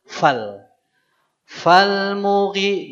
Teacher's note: Jadi bukan fa-nya dipanjangkan, tapi langsung fal.